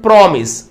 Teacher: But in this promise, the stress will be on the first syllable. First syllable పైన stress రావడం గమనించవచ్చు.